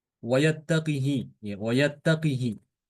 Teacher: Imam Hisham ini membaca qaf dengan kasroh ya, tanpa silah.